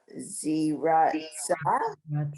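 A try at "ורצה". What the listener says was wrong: No, it's not a Z. There's your vav.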